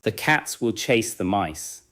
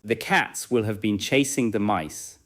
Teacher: The number of words increases, but the main stressed beats may remain cats, chase, and mice. The extra words become shorter, so the rhythm can continue.